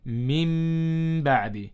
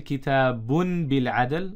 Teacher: And if ba comes after nun sakin, then we change the nun sakin or tanween into a mim and read with gunna. So instead of saying min ba'di, we say mim ba'di. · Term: iqlab